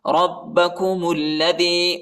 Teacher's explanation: با کو سختی کے ساتھ پڑھنا ہے، با پر شد آیا ہے۔ ربکم الذی، اور میم کو لام کے ساتھ ملانا ہے، الف نہیں پڑھا جاتا، اس کے اوپر حرکت نہیں ہے۔